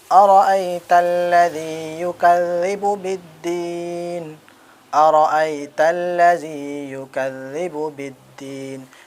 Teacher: لذی بھی تھوڑا ہم کو کھینچنا ہے کیونکہ یا ساکن سے پہلے زیر ہے یا مدہ ہوگا، اور ان کو ہم کو تھوڑا کھینچ کر پڑھنا ہے، ایک الف کے برابر۔